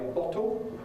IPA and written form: ˈbɒto (bottle)